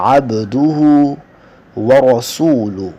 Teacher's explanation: با کو ظاہر کریں گے قلقلے کی وجہ سے